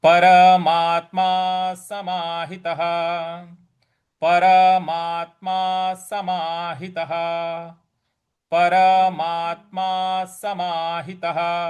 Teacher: यहाँ परमा के आगे आधा त है तो यहाँ पे थोड़ा सा बल लगाएंगे।